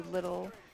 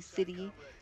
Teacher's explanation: we say our T's with a D sound, like most people say little and they pronounce the T's, but we just say little, and we don't say city, we say city.